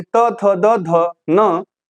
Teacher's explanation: तो आपका जो जिह्वा है ना वो आपके दांत पे पूरा फोर्स के साथ आएगा और वापस चला जाएगा वर्ण को उच्चारित करने के बाद।